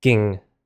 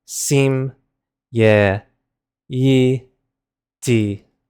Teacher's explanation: Again, notice how the first one is a short I, Ging. The rest are all long I's